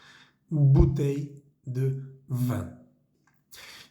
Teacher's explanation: la v pequeña vamos a pronunciarla con los dientes de arriba contra los labios de abajo se siente una vibración en la garganta